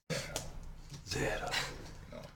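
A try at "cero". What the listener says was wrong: No, there's no Z's. It's zero? It's not zero. Zero. The Z does not exist. No, it's zero.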